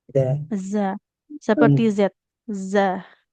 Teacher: huruf zinya jangan jadi ja